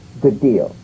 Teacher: Identical, D to D. Good deal. You don't need to fully pronounce the first D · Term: prepare and link